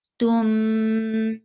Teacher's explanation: you will keep sound in your nose, and that is called a gunna, and it will be 2 haraka long. Like long, 2 haraka, when I will say, so this will be the time you will keep that sound in your nose.